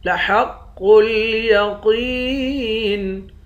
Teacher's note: قاف کو موٹا پڑھیں گے، یا کے ساتھ ملا کر ایک الف کے مقدار کھینچیں گے، آخر میں نون ساکن ہے۔